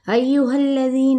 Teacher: ہا کی زبر کو لام کے ساتھ ملائیں گے، لام کی حرکت کو کھینچیں گے نہیں